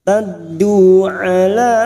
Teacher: ada mat yang bertemu dengan hamzah di lain kalimat, mat jaiz munfasil 5 harakat kita panjangkan